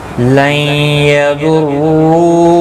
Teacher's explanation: نون ساکن کے بعد حروف یرملون کا یا ہے، ادغام مع الغنہ ہوگا، گنہ کے ساتھ پڑھیں گے۔